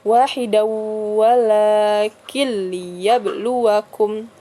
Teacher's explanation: nun mati bertemu dengan lam ya tidak didengungkan ya hanya langsung masuk kedalam framenya aja tapi tidak berdengung jadi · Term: idgham bilagunnah